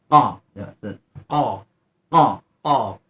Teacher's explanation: Pangkal lidahnya terangkat. Terkesan bunyi oh, sama. Karena qaf ini salah satu huruf isti'ala, khusus tinggi.